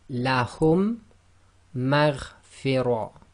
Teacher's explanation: they're applying this Idghaam, so they're assimilating the 2 Meems together.